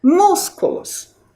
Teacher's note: Qual é a sílaba mais forte? Músculos. É a sílaba mus.